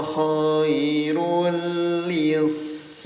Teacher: Bunyi dhammah tainnya yang asalnya bacanya khairun jadi nempel ke huruf lam ya. Khairun jadi khairul li namanya idgham. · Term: idgham bila gunnah